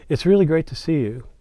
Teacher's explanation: when I'm speaking in my subdominant, when I say, it's really great to see you, then you feel like, well, there's something else coming, and that creates instability.